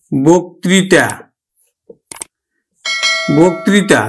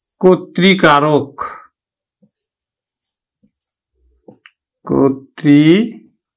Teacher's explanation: এই যে আদ্য অ অর্থাৎ বয়ের সাথে যে একটা অধ্বনি আছে সেটা কিন্তু ওকার হয়ে যাবে। তাহলে আমরা উচ্চারণ করব কিন্তু বয় ওকার ক, বক ত্রি তা, বক্তৃতা, আমরা উচ্চারণ করব বক্তৃতা। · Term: সংবৃত উচ্চারণ